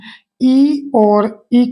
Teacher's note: जीवा के अग्र आगे वाले भाग से इ और इ का उच्चारण किया जाता है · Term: अग्र स्वर